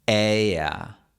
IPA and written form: 'eɪ.a (ella)